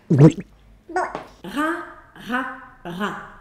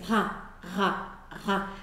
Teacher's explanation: ra Esso aqui seria o r do francês Então qual é a diferença entre o R carioca e esse é que simplesmente eu vou vibrar a garganta um pouquinho mais eu vou fazer uma vibração Zinha e eu sei que isso